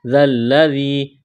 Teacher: ذلذی ذال کو نرم کرنا ہے، یا مدہ ہے، ایک الف کے برابر کھینچنا ہے